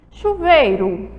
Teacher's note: A palavra tem a penúltima sílaba mais forte. Chuveiro. Então, ela é uma palavra paroxítona, é a penúltima sílaba tônica, certo?